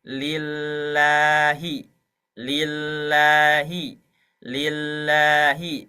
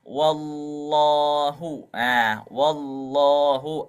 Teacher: yang tadinya dibaca lillahi ketika diberi harakat fathah sebelumnya maka tebal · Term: menggemukkan huruf lam